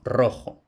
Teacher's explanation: la r fuerte, es decir, vibrante múltiple a principio de palabra, por ejemplo, rojo. Mientras que en latín y todavía, por ejemplo, en italiano, la ros percusiva, es simple, es, es decir, la r fuerte del castellano, a principio de palabra no procede del latín.